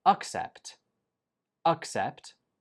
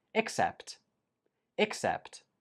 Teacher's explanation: The only difference is in the first syllable, uck and ick.